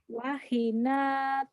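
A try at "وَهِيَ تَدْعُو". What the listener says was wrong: Bukan. Wahina tad'una gitu. Hi-nya yang panjang ya. Wahina.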